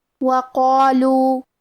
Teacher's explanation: کلمت وقالوا میں حرف القاف کی ادائیگی زبان کے جڑ اور تالو کے نرم حصے سے ہے. قاف حروف التفخیم میں سے ہے، لہذا ہم یہ حرف کو موٹی آواز میں پڑھیں گے کیونکہ اس کے بعد مد الف ہے اور مد الف اپنے پیچھے والے حرف کا حکم لیتا ہے تفخیم میں اور ترقیق میں، لہذا ہمیں مد الف کو بھی بھاری آواز میں پڑھنا ہے.